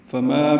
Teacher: فما میں فا کو جلدی ادا کرنا ہے، پڑھنا ہے. ما الف مدہ ہے تو حرکات لمبا کرنا ہے. ایک الف کے برابر یہ الف مدہ ہے.